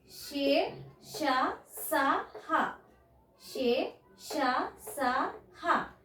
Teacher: వీటిని ఊష్మాలు అంటాం ఊది పలకడం అంటే ఊది పలుకుతాం